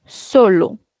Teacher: El sonido de la O es más cerrado. É mais fechadinho o som do O.